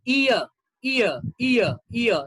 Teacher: you have one vowel, and from one vowel you move on to another vowel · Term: diphthongs